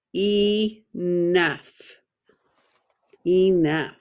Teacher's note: don't say nf we see enough long e and then the o-u-g-h you hear it as f